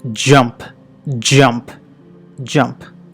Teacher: It's an ఆఫ్రికేట్, meaning it's a combination of plosive and a ఫ్రికటివ్. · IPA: /dʒ/